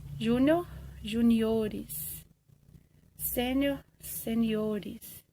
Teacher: Tem algumas palavras que eu tenho plural com deslocamento da sílaba tônica